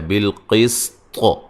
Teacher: جب وقف کریں گے طا کو موٹا بھی کریں گے اور قلقلہ بھی کریں گے